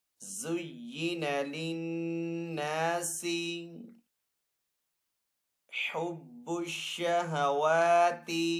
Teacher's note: زین للناس، نون کے اوپر یہاں پہ تشدید ہے تو یہاں پہ نون مشدد ہے تو نون کے اوپر یہاں پہ غنہ کر کے پڑھیں گے · واو کے اوپر یہاں پہ کھڑا زبر ہے تو واو کو ایک الف دو حرکات کے برابر کھینچ کر ادا کریں گے